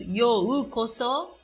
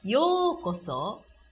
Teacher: We don't pronounce yo-u-koso, but yokoso, it's a long vowel. So you don't really pronounce u sound, but more like you make yo sound longer.